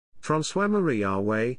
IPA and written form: fʁɑ̃swa maʁi aʁwɛ (François-Marie Arouet)